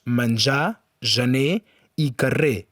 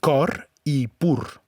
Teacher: La lletra R, en posició final, sovint s'emmudeix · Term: La R final